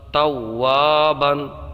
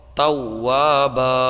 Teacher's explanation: یہ جو دو زبر کی تنوین ہے اس کو ہم وقف میں الف سے بدل دیں گے، اس لیے کہ یہ قاعدہ ہے کہ کلمے کے آخری حرف پر دو زبر کی تنوین ہو تو وقف میں اسے الف سے بدل دیں۔